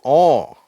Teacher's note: இதை சொல்லும்போது உதடுகள் இன்னும் கொஞ்சம் ரவுண்ட் ஆயிடுது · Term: மூணாவது ஓசை